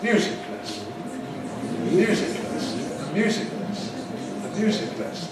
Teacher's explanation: the first element is treated as stronger and the second element as weaker. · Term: compound nouns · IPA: [ˈmjuːzɪk ˌlesn̩]